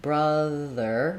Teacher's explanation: in brother we also want to make sure we use that voiced th sound so for the the sound the tongue rests between the teeth